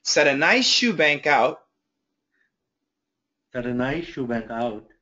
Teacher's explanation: And when puts them together, we don't really hear the S, but we hear the SH.